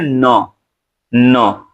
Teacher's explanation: त, थ, द, ध लेकिन जो ही आप कहते हैं न, न तो दांत पे जीभ टच नहीं करती है। दांत के ऊपर मसूड़े पे टच करती है।